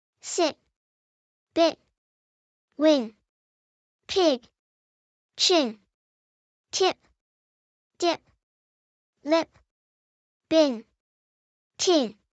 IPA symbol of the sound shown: i